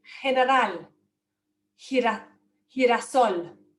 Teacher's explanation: Before an E or an I, it's a softer G, it's more like an English H sound